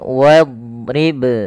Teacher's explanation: Ada getaran, ada pantulan di situ dalam suara huruf ba-nya. Makhraj huruf ba adalah bibir kita. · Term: qalqalah